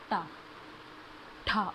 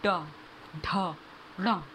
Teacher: जीभ का जो आगे वाला पार्ट है थोड़ा सा टर्न होगा और तब हमारे ऊपर वाले पैलेट पे लगेगा, तालवे पे लगेगा, तब साउंड प्रोड्यूस होगी। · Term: मूर्धन्य